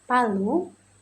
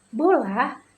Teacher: bunyi bilabial, yaitu komposisi dari dua bibir sepenuhnya lalu dilepas secara tiba-tiba. Contohnya huruf P seperti kata palu dan B seperti kata bola.